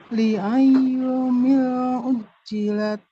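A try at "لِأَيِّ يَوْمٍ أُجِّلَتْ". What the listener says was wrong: Nah, tanwin. Li ayyi yaumin. Nah, li ayyi yaumin ujjilat gitu.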